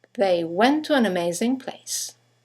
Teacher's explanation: one ending with a T, the next one starting with a T, they run into each other, and then 2 words starting with a vowel, an, amazing. · you have the semi-vowel W that connects the vowels to and an to each other